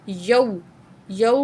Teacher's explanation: अगर वाव से पहले वाले अल्फाज पर ज़बर होगा तो ये वाव लीन है। इसको हम जल्दी से अदा करेंगे, ठीक है। यौ, यौ, यूँ लंबा नहीं करेंगे, हम क्या करेंगे?